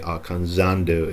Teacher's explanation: Don't forget that in Spanish, Z, in Latin American Spanish at least, Z is the same sound as S